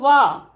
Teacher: वकार से दंतोष्ठम, तो वा, उ और आ के संयोग से वा बनता है, इसलिए इनका उच्चारण स्थान दंतोष्ठ हुआ। उ का उच्चारण स्थान ओष्ठ है, तो इसलिए इनका उच्चारण स्थान दंतोष्ठ कह दिया।